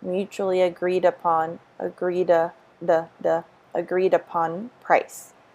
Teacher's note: we have the Y intrusion because it's vowel to vowel